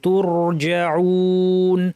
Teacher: তুরজাউন, ওয়াওয়ের পরে নুন জবর আছে, আমরা নুন সাকিন দিয়ে যদি থামি, স্বাভাবিকভাবে এক আলিফ ছিল, কিন্তু নুন সাকিন দিয়ে থামার কারণে এটা 1 2 3 আলিফ পর্যন্ত করা যাবে, মাদ আরিদ বলা হয়। আমরা 2 আলিফ টেমে থামবো ইনশাল্লাহ।